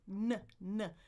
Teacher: I'm pushing the air out my nose, right? So I have an oral cavity where the air could be, and then I have this quite large nasal cavity back here.